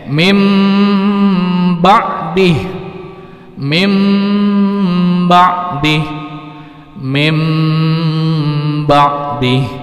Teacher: Nunnya tiba-tiba berubah menjadi huruf mim. Khusus untuk huruf yang setelah itu berubah menjadi ba, bertemu dengan ba, ya, berubah n menjadi m. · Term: iklab